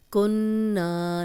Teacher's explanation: ما کنّا، ما 2 حرکات لمبا کریں گے، الف مدہ ہے۔ کنّا نون پہ غنہ کریں گے، اس لیے کہ نون پہ شد ہے، نون پہ شد ہو تو غنہ کیا جاتا ہے۔